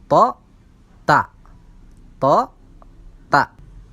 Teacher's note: Maka letak huruf to dan huruf ta ini sama-sama di ujung lidah